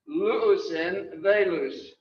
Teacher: you kind of put an N between two words that end and begin with vowels.